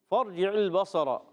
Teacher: صاد کے ساتھ را بھی پر ہوگا